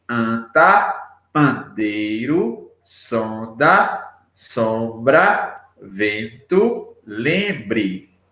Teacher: Parte do ar na pronúncia dessas palavras sai pelo nariz. · parte do ar sai ao mesmo tempo pela boca e pelo nariz. Dizemos que essas palavras têm um som nasal.